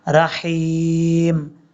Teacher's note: اب یہاں پر یاد رکھیے گا را کے بعد ہا ہے، اس ہا کو بریک پڑھیں گے اور بھاری ساؤنڈ کے ساتھ نہیں پڑھنا